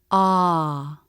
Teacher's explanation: Father vowel this vowel needs a lot of jaw drop ah the tongue tip lightly touches behind the bottom front teeth and the back part of the tongue presses down a little bit ah the lips are neutral very relaxed ah because the tongue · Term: ah as in Father vowel